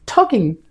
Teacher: টিতে চাপ দিয়ে বলবো talking